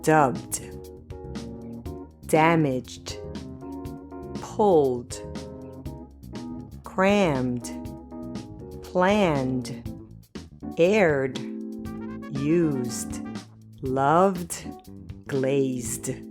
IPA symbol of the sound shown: d